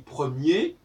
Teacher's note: On n'entend pas le R du singulier de premier, parce que singulier masculin, parce que il n'y a pas de E après le R, alors qu'il y en a un pour première au féminin.